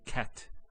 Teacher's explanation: So the T doesn't have any vowel associated with it. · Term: sukoon